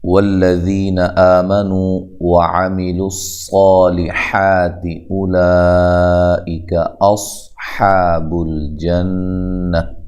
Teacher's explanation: واو کو ادا کرتے ہوئے ہونٹوں کو گول کرنا ہے، لام کو موٹا نہیں کرنا، لمبا بھی نہیں کرنا۔